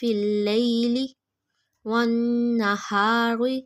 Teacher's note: نون مشدد پہ غنہ کیا